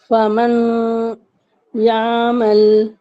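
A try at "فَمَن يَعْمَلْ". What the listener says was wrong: देखिए यहाँ पर इदगाम होगा ना, तो हम नून की आवाज को हटा देंगे बिल्कुल, और माँ को या से मिला देंगे।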